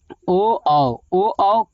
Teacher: कंठ प्लस ओष्ठ से बोला जाता है, कंठ प्लस ओठ से बोला जाता है